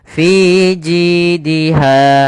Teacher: Kemudian pada lafal fi ada mad thabi'i yaitu kasrah bertemu dengan huruf ya panjangnya dua harakat. Kemudian ji ada kasrah bertemu dengan huruf ya panjangnya dua harakat.